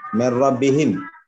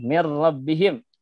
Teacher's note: itu idgham bila gunnah karena bertemu dengan huruf ro